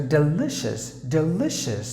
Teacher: Delicious. You have to stress li.